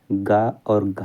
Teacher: कंठ से उत्पन्न होने वाले वर्ण हैं, तो कंठ से उत्पन्न होने वाले वर्ण हैं गा और घा जो हैं ये कंठ से उत्पन्न वाले वर्ण हैं।